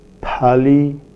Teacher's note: Dental place of articulation, produced with the tip and blade of the tongue against the teeth. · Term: dental sounds